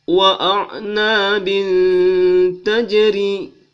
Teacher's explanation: 2 baris ketemu dengan ta, maka hukumnya ihfa, berdengung 2 alif atau 2 harakat